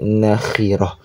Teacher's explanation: ta marbutah ketika sukun ketika berhenti maka dibaca ha sukun mati